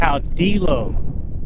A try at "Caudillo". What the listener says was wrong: No, L's are silent. Caudillo.